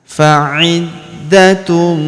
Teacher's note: Huruf da kita tahan dan kita tekan karena terdapat tanda tasdid di atasnya.